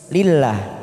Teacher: Lillah dalam jalalah didahului kasroh maka kita baca tipis lillah.